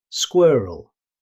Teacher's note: In British English it's pronounced squirrel. However, in fast natural speech, the final vowel can become very weak, sounding more like squirrel.